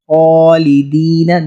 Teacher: نے ان میں لانا ہے ہا اور ہا میں۔ خالدین، دیکھیں خا کو پر موٹا کر کے کھڑا زبر ہے، کھینچیں گے بھی ساتھ ، خالدین، دال یا زیر دی، خالدین فیہا، ہم فیہا نہیں